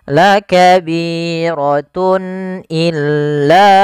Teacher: Kemudian pada lafal tun illa di sini ada izhar halqi, yaitu suara tanwinnya harus dibaca dengan jelas karena ketemu dengan huruf hamzah.